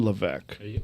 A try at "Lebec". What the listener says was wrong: You had it right the first time. It's with a B, Lebec.